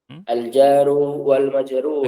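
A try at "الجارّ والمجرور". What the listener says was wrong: Lagi-lagi itu salah. Harusnya gimana? Tasdid roknya ya. Al-jarru wal majrur.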